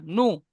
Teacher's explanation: নু টান হয়ে যাচ্ছে, নু টান হবে না, নু। নুন নু, পেশ নু।